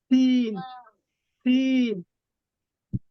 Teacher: জিহ্বার আগা সামনের নিচের দুই দাঁতের পেটের সঙ্গে লাগাই উচ্চারিত হয় সিন